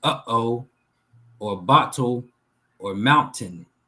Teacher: There's a um a pause in the breath and then there's a comeback.